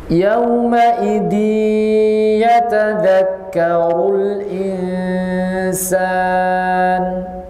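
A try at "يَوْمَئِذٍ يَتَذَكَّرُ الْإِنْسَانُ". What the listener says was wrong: Idgham digunakan jangan ditekan. Yawma idi enggak. Dia tidak ditekan. tanpa ditekan.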